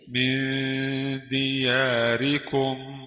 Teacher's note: نون ساكنة مخفاة عند الدال المكسورة بغن حركتين